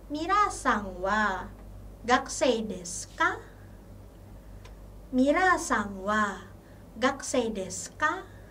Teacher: kita tambahkan ka, partikel ka, sesudah kopula des dengan pengucapan yang intonasinya sedikit meninggi